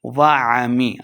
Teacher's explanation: عین کو حلق کے درمیان والے حصے سے ادا کریں گے.